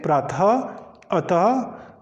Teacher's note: यहाँ पर हमारे पास जो ह की ध्वनि है वो निकलती है। तो जो ह की ध्वनि निकलती है वो विसर्ग के कारण निकलती है।